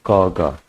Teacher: है ध्यान दीजिए जिनको बोलने में कम समय लगता है और बोलते समय मुख से कम वायु कम वायु निकलती है उन्हें अल्प प्राण व्यंजन कहते हैं